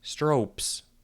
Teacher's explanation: that sounds like strokes easier than i expected it to be so we lost a little bit of the s at the end